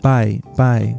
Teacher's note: the word buy contains the pure A sound, but it's stuck together with the I sound.